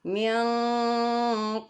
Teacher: Nun sukunnya kedengaran seperti lebih mendekat ke huruf ke bunyi ng minqabali ya karena huruf qf jauh dari makraj Nun jadi karena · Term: ikhfa ab'ad